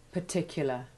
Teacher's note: In particular, the first and the second AR are both weak ivy sounds. But when the second AR becomes stressed in particularity, it not only replaces its short A2 ivy sound with short A1, but strengthens the R sound.